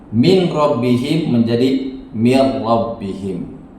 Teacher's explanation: Jadi masuk pada huruf lam tapi tanpa dengung, namanya idgham bila gunah. Ya, nun sukun atau tanwin ketika bertemu lam atau ro tanpa dengung, diidghamkan tanpa dengung